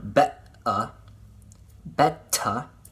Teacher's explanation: this is called again the glottal stop that little stop is just stopping the flow of air